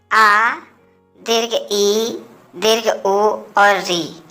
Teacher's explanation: इनकी संख्या 4 है और इनके उच्चारण में ह्रस्व स्वर से 2 गुना समय लगता है। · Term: दीर्घ स्वर